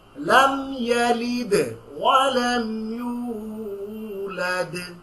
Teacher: just দুইটা দালের মধ্যে stress দিবেন, একটু কলকলা করবেন